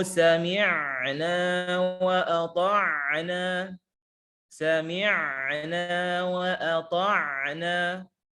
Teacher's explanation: Di sini penulis mengatakan dengan syiddah memutus aliran suara sehingga seolah-olah putus katanya di situ, putus kalimatnya di situ.